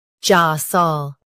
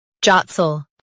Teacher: In US, stress ja. In UK, stress jot.